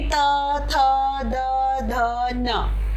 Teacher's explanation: जो जीभ है वो दांतों को जो टच करके जिस स्वर को बाहर निकालती है वो दंतव्य कहलाता है, यानी कि दांतों से हमारा जीभ का दांतों पर स्पर्श हो रहा है, यानी त, थ, द, ध, न, यानी हमारी जीभ कहाँ जा टच हो रही है, दांतों पर टच हो रही है, तो वो कहलाएगा दंतव्य यानी कि दांतों से।